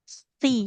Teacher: huruf sa. Ujung lidahnya tambahkan ke ujung gigi seri atas.